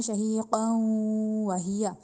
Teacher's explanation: 2 زبر آئیں گی تو ناک میں آواز لے کے جانی ہے ، شہیقا وہی، تیزی سے نہیں پڑھنا، ہم نے پڑھنا ہے